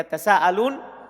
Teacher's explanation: Ketika mengucapkannya harus diperpanjang matnya. Oleh karena itu dikata ya tasa'alun ini dibaca dengan 4 atau tadi beliau bilang 4 sampai 5 harokat panjangnya, matnya. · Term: huruf mat